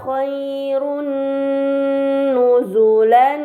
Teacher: Ini dinamakan idgham bi gunnah. Maka dhammah tain harus dibaca secara melebur dengan gunnah yang dipanjangkan